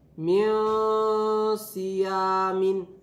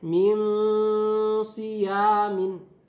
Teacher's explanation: Jadi minnya menjadi sedikit disamarkan sehingga bersiap-siap untuk membaca huruf so-nya. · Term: ikfa